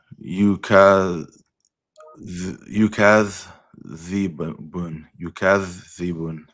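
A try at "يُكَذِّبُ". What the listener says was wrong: Not bun, just bu. Yukadhibu. There's only one dhamma there.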